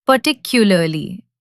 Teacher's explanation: Particularly, the stress is on the second part.